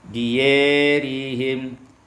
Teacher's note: dibaca imalah fathah ya dan alif